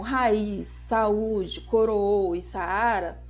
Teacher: O que acontece no encontro de duas vogais elas se separam · em raiz o i não tá funcionando como semivogal ele está funcionando como vogal já que ele possui acentuação tônica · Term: encontros de duas vogais